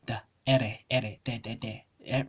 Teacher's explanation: It's just a tap, like your alveolar tap sound.